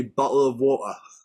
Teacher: And normally, if they go missing, if they drop off the word, just because of the way people pronounce things, just the way English people say bottle of water, we drop all our T's